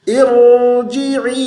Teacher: جے نہیں پڑھنا، جی کی آواز ہے. اے کی آواز نہ ہے، ای کی آواز ہے.